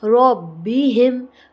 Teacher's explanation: رو کو موٹا کر کے پڑھیں گے، با پہ تشدید ہے